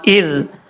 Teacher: زال جو ہے بغیر سیٹی کے ساتھ پڑھا جاتا ہے، اس کو سیٹی کے ساتھ پڑھنے کی ضرورت نہیں ہے۔